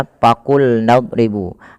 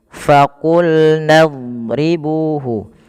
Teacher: Nah, usahakan dia ketika melafalkan fa itu bibir kita tidak terlalu lapat dan ada rongga yang kita keluarkan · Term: huruf fa